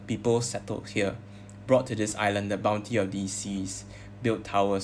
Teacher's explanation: So the plosive alliteration here, brought, bounty, built